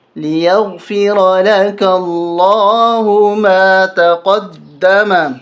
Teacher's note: یہاں پر لفظ اللہ موٹا ہوگا، اس لیے کہ لفظ اللہ سے پہلے زبر ہے، زبر اور پیش ہو تو لفظ اللہ کو موٹا کر کے پڑھا جاتا ہے۔